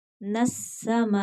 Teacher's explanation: नून को सीन के साथ मिलाएंगे क्योंकि सीन मुशद्दद है